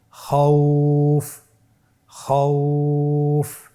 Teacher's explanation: পরবর্তী হরফ খ ওয়া জবর খাও, ফা দুই পেশ ফুন, খাউফুন। এখন আমরা যদি লিনের হরফের বামের হরফটির উপর ওয়াকফ করি তাহলে আমাদেরকে এক আলিফ টেনে পড়তে হবে।